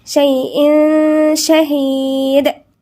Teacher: والله، الواو هنا مرققة، منقولش والله لا، والله على كل شيء، في هنا غنى تنوين وبعدين شين، والشين مش من الحروف الاستثناء يبقى هنغن فيها